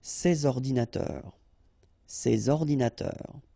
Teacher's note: so you should make the liaison between s and o